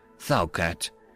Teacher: the initial D almost turning into a th